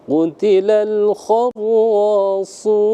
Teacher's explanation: Ra dan su, sad itu 2 huruf yang tafkhim, tebal ya. Qutilal kharrasun, su, sa, si, su tebal ya.